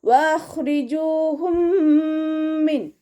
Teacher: മീം സാക്കിനയുടെ നിയമത്തിലുള്ള ഇദ്ഗാം. അപ്പോൾ മീം സുക്കൂനായ മീമിനെ അടുത്ത മീമിലേക്ക് ലയിപ്പിച്ചിട്ട് ഒന്നയോടുകൂടി ഓതിക്കൊടുക്കുക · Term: ഇദ്ഗാം ഷഫവി